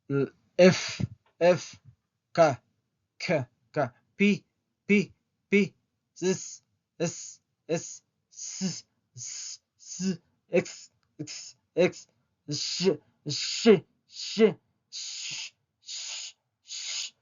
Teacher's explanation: todas esas consonantes tienen un sonido sordo sin vibración